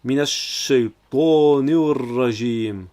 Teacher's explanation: le alif lam qui s'efface au profit de la lettre ra, car c'est une lettre solaire, tout comme le shin juste avant.